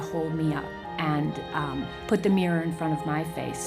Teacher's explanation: you don't really hear the O between them what you do get is a kind of lengthening of the liquid sounds